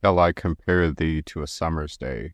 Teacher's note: each foot follows an unstressed, stressed pattern. In each line of iambic pentameter, there are 10 syllables in total, alternating between weak and strong beats.